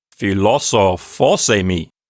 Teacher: So according to the rules of ancient Greek accents, what will happen is that that first accent over the omicron will stay put, but then the word philosophos gets another accent donated to it from the enclitic eimi. So eimi gives away its accent. That ends up over the last syllable of philosophos. And so as a syllable counting unit, it sounds like philosophosemi. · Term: 2 accents